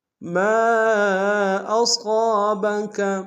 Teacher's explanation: ما کے ساتھ الف مدہ ہے، الف مدہ کے اوپر مد منفصل ہے، کم سے کم 2 سے ڈھائی الف نار میں کھینچے گی۔ صاد کو موٹا ادا کریں گے، صاد کے ساتھ الف مدہ ایک الف نار میں کھینچے گی۔